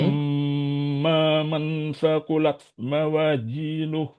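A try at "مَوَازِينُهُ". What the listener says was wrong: Mawazinuh. Huruf za yang tadi. Mawazinuh.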